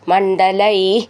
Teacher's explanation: മണ്ഡല എന്നുള്ളത് നഡ എന്നാണ് ഒട്ടും ഊന്നണ്ട